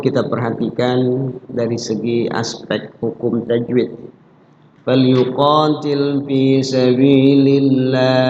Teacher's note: Falyuqatil, qa-nya adalah matobi'i, memiliki panjang dua ketukan atau sekedar diayun.